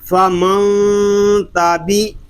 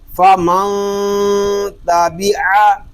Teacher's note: فا زبر فا، میم نون زبر من، فمن، تا زبر تا، فمنتا، اس کو فمنتا نہیں پڑھیں گے، یہاں اخفا ہو رہا ہے اور ہم یہاں پر غنّے کو چھپا کر کریں گے، یعنی نون ساکن اور تنوین کی آواز کو یہاں پر چھپائیں گے، کیونکہ اخفا کا معنی ہے چھپانا۔